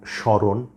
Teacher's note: যুক্ত থাকে তাহলে সাধারণত ম এর কোন উচ্চারণ হয় না তবে ম ফলা যুক্ত ধ্বনিটির সামান্য নাসিক প্রভাবিত উচ্চারণ হয় অর্থাৎ খানিকটা নাকি স্বরে উচ্চারণ করতে হবে